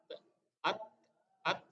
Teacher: Ujung lidah bertemu dengan gigi seri atas.